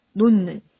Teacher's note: 디귿이 니은하고 만나면 니은을 닮아서 비음으로 바뀐다. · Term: 비음화